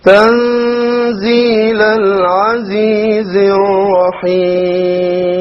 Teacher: The Ra here once again will be heavy. And then the Lam over here will be solar, so it will be dropped